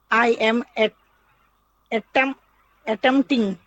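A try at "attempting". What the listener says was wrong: হ্যাঁ, পির উচ্চারণ করবে না, অ্যাটেম্পটিং।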